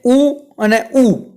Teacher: ઉ અને ઉ બોલો એટલે તમારા હોઠનો ઉપયોગ થાય છે. તમને જાતે જ તેનો અનુભવ થશે. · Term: ઓષ્ઠ્ય